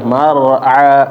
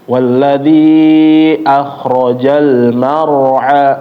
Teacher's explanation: huruf ro yang tebal ditebelin lagi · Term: ro tebal